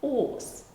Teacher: in some local dialects, they drop this initial H, and instead of house, they say house, ors.